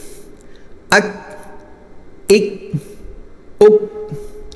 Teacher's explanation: یہ کاف باریک ہوگا اور اس پر آواز بند ہوگی، قلقلہ نہیں ہوگا، آگے والے کاف پر قلقلہ بھی ہوتا ہے۔